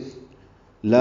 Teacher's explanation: الف مدہ ہے، 2 حرکات لمبا کریں گے